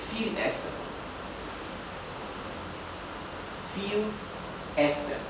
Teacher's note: la B corta, la V, en alemán se pronuncia como la F